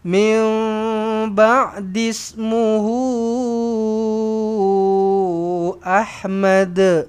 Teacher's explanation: di sini min ba'dis matikan terus dekat sin ba'dis muhu ahmad muhu nampak ada wau kecil lepas tu atas dia ada ombak maka ini adalah mad silah tawilah perlu dibaca sama ada empat ataupun lima harakat